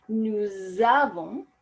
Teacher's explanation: that S that ends nous is normally not pronounced, but that is suddenly going to be pronounced to create that beautiful liaison